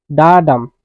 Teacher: ডা কোৱাৰ সময়ত মুখৰ পৰা ইমান জোৰ অহা নাই, কিন্তু ডাম যেতিয়া কম তেতিয়া জোৰ আহিব। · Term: এম্বিক মিটাৰ